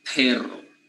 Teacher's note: we don't have that aspirated p